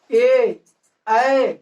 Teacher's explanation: ए और ए जो है कंठ और तालु दोनों से निकलता है। दोनों से उच्चारण होता है।